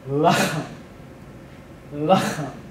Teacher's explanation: we get a penultimate stress here, and this becomes lachem